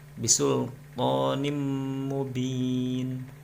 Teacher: Cara membacanya adalah bisulqanim mubin. Jadi harus dengung, ditahan 2 harakat. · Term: idgham bi gunah